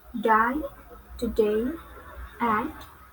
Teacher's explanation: Next is English consonant D. It belongs to alveolar and stop.